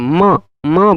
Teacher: मुख और नासिका दोनों से जिसका उच्चारण किया जाए वह अनुनासिक म म बोलते हैं तो थोड़ा नाक का भी प्रयोग होता है